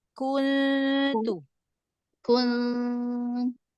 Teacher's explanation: nunnya lidahnya jangan nempel di makhraj nun. Ngambang.